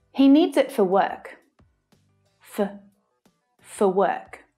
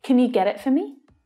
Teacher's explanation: the vowel sound reduces down to become the schwa sound